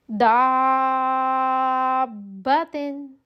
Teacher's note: دابتن بڑی مد اور اس سے پہلے زبر، الف سے پہلے زبر آ گئی تو الف مدہ آ گیا، تو 5 حرکات اس کو دینی ہے، 5 الف کی مقدار